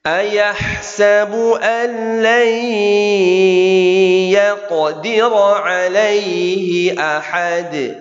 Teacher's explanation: Nun ketemu ya, idgham bi gunnah, tahan dengungnya.